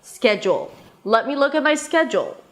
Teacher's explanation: Schedule, the first syllable is the primary stress, so it's higher in pitch and longer. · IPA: ˈskɛdʒəl